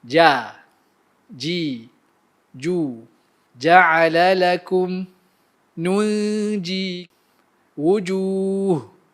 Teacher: Huruf jim terhasil dari tengah lidah bertembung dengan langit-langit bahagian atas. Berkongsi makhraj dengan shin dengan ya.